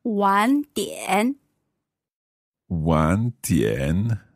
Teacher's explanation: so two third tones there